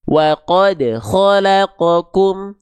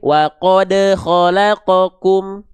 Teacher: maka dipantulkan dengan keadaan yang lebih ringan. Namanya qalqalah sugra. Pantulan yang kecil atau sering saya sebut pantulan yang ringan saja.